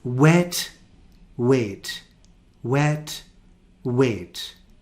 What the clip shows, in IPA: e and eɪ